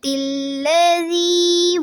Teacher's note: لام کو پر نہیں کرنا اور زی کو نرمی سے ادا کرنا ہے